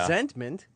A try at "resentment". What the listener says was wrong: I don't like the fact that you enunciated the T in the middle there.